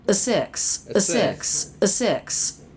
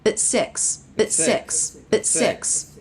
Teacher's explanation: we have that mispronunciation where there's no stop. It's just continuous air, the vowel right into the S consonant.